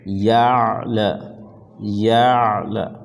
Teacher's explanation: عین کی آواز کو گھونٹ جائیں گے